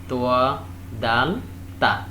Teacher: These 3 letters are pronounced when the upper part of the tongue touches the lower end upper teeth.